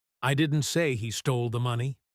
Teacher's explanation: The spotlight is on money.